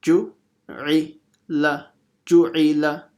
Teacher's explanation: the dhamma makes an u sound. So it becomes u, bu, tu, thu. So again, very quick and short.